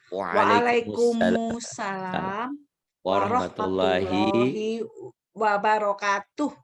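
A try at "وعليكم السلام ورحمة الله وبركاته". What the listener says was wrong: Bukan wabarakatuh, kayaknya panjang. Wabarakatuh. Takut merubah arti. Jadi kan Quran itu panjang pendek punya makna. Syukur sama syakaro sama sakaro lain.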